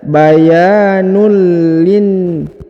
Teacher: huruf nun harokat un bertemu dengan lam, maka unnya menjadi hilang melebur ke huruf lam, yang ini ya, berharokat i, maka dibaca bayanul lin.